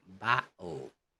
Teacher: Okay, as you could notice, as you could see, the T's are removed. Battle, catching the air behind the back of the tongue at the end of the first syllable before expelling it on pronunciation of the second syllable. Okay, so you have to, there's an air behind of the tongue. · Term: glottal stop